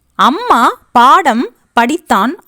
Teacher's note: அம்மா, பாடம், படித்தான் ஆகிய சொற்களில் மகர மெய்யெழுத்து தனக்குரிய அரை மாத்திரை அளவில் முழுமையாக ஒலிக்கும்.